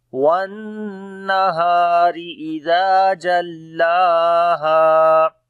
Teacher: نون کے اوپر شد ہے، غنہ کریں گے، ہا کو لمبا کریں گے، الف مدہ ہے، را کو باریک پڑھیں گے۔ وَالنَّهَارِ، اذا زال کو نرم پڑھیں گے، الف مدہ ہے، لمبا کریں گے، لام کے اوپر کھڑی زبر ہے، اس کو بھی لمبا کریں گے اور ہا کو بھی لمبا کریں گے، یہاں پر بھی الف مدہ ہے۔